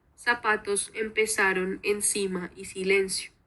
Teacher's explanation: Y otro rasgo es el ceseo, donde no hay diferencia entre S, C y Z, por lo que pues todo se escuchaba como si fuera una S